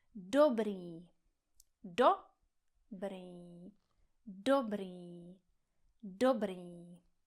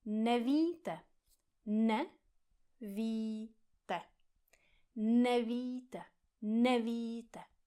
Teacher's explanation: Trénujeme přízvuk na začátku slova, který je vždycky v češtině pravidelný.